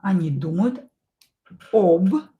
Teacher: We pronounce ab. We write it with o.